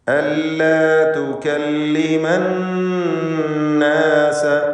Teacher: അന്നാസ, ഈ പദത്തിലെ നൂനിനെ മണിച്ചുകൊണ്ട് ഉച്ചരിക്കുക. നൂൻ മുഷദ്ദദ 2 ഹറക്കത്തിൻ്റെ അളവിൽ ഗുന്ന നൽകുക.